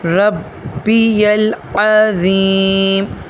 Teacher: سبحان ربی اچھا یہاں پہ رب میں دیکھیے گا، اس کا جو با ہے یہاں پر 80% لوگ اس کے با کو نرمی سے پڑھ لیتے ہیں۔ با کے اوپر شد ہے، تشدید ہے، اس کو تھوڑا سختی سے ادا کریں گے۔ ربی العظیم، اور ربی العظیم کا جو عین ہے اس کو لوگ حمزہ زبر آ کی طرح پڑھ لیتے ہیں۔